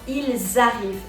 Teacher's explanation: Par exemple, dans ils arrivent le S de il là, vous voyez qu'on va le prononcer parce qu'il y a liaison